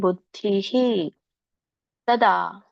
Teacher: ಬುದ್ಧಿ ಧಕ್ಕೆ ಈ ಅನ್ನುವಂಥ ಸ್ವರ ಕೂಡಿರೋದ್ರಿಂದ ವಿಸರ್ಗ ಕೂಡ ಈ ಅಂತ ಉಚ್ಚಾರಣೆ ಬರುತ್ತೆ. ಹಾಗಾಗಿ ಬುದ್ಧಿ ತದಾ.